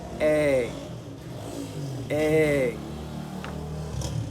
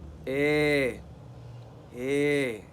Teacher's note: the lowest of the front vowel is A